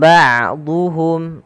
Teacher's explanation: dha tebalkan huruf dha-nya dan kita bedakan antara hiya dengan huruf dal.